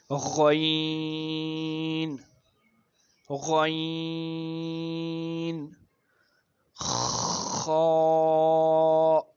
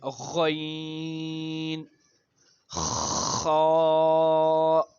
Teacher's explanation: ادنائی حلق یعنی جو ہمارا ماؤتھ والا جو پارٹ ہے، جو گلے کا ہمارا منہ والا حصہ ہے، اس میں سے جو اوپر والا حصہ ہے اس سے 2 حروف جو ادا ہو رہے ہیں وہ ہے غین، غین، خا. یہ ہمارے گلے کے اوپر والے حصے سے ادا ہو رہے ہیں